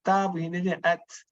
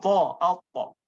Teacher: kita akan bezakan ta begini at, dia melibatkan ujung lidah. Kalau to, out, to, dia melibatkan hampir keseluruhan lidah.